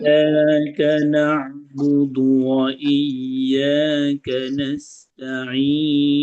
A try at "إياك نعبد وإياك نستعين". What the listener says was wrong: হামজাটাকে শক্ত করে ধরতে হবে, কেমন? এখানে এখানে আপনার হামজাও ঠিক আছে, ইয়াও ঠিক আছে, কিন্তু ধরার প্রবলেম আছে। ধরার সমস্যা কি? আপনি ওই হামজাকে ইয়াকে এমন ভাবে ধরছেন যার কারণে ইয়া মরে যাবে, ওর গলা টিপে ধরছেন আপনি। গলাটা ধরতে হবে আস্তে। আপনি বলছেন কি ই ই ইয়া ই ইয়া ই ইয়া ধরেন, মানে ডাইরেক্ট ঘুষি মারেন, ডাইরেক্ট কি মারেন।